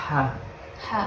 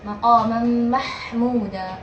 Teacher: kalau hak kecil dari tengah-tengah tenggorokan. Nah, hak ini memiliki sifat atau suara, kalau bahasa Arabnya fahih al-fi'ban.